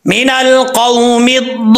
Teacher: लाम पे गुन्ना नहीं करना, सिर्फ लाम के ऊपर जो शद है शद की अदायगी करनी है, गुन्ने से बचना है